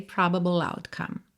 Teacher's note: como esse ble, eu tô terminando com a língua no céu da boca, eu já vou pra loutcome